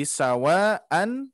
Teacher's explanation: Ada mad bertemu hamzah. Jadi akan terjadi mad panjang 4 harakat atau sampai 5 harakat.